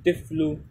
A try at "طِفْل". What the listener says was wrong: طفل. صحیح ہے طفل طفل. ایک ہے طفل ایک ہے طفل. طا طا ہے نا طا فاضل طف لام پشلو طفل.